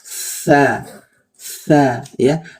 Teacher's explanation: Dari segi suaranya dia lemah. Dari segi napasnya dia mengalir. Ya, sehingga suaranya samar ya. Suaranya samar karena pita suaranya terbuka. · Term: huruf lemah